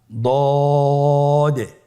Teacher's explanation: দ আলহামদুলিল্লাহ দদ হরফটিও মোটা হরফ মোটা করে উচ্চারণ করতে হবে দদের মাখরাজ জিহ্বার গোড়ার কিনারা সামনের উপরের দুই দাঁতের গোড়ার সঙ্গে লাগিয়ে উচ্চারিত হয়